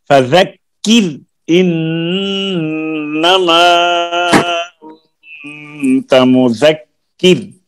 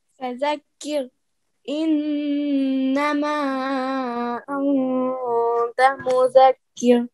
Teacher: یہ راہ ہے نا ساکن ہے، اس سے پہلے کاف کے نیچے زیر ہے، تو یہ باریک پڑی جائے گی